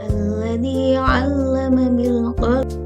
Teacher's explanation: Pada lafal alladzi itu panjang bacaan adalah 2 harokat atau 2 ketukan, disebut dengan mata.